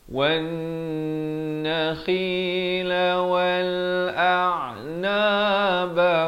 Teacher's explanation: Di sini idgham bi wajibul gunnah, wajib dengan 2 harakat. Wan nakhi, kha di hujung kerongkong